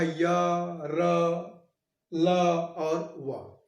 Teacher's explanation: अंतस्थ व्यंजन में क्या होता है? जीभ किसी भी भाग के, मुंह के किसी भाग को स्पर्श नहीं करती